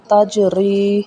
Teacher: تا زبر جیم تج، را زیر یا ری، تجری۔ یا ساکن سے پہلے زیر آ جائے تو وہاں پہ یا مدہ ادا ہوگا